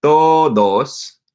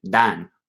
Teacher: It's like a fricative D, and the word dan, it's a stronger D.